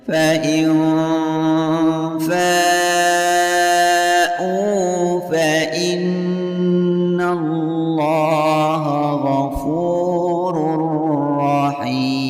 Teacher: Fa in hukum bacaan ikhfa hakiki karena ada nun sukun yang bertemu dengan huruf fa. Cara membacanya bunyi i ditahan serta mendengung dan disamarkan selama 2 harokat. Fa in fa hukum bacaan mad wajib muttasil karena ada mad atau ada mad tabi'i yang bertemu dengan huruf hamzah di dalam satu kalimat.